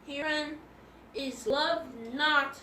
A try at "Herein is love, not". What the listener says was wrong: No, herein is love, comma, so you have to pause. Herein is love.